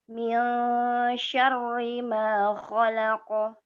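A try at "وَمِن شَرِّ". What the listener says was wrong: Syarri. Tipis teh. Roknya tipis. Wa min syarri. Syarri.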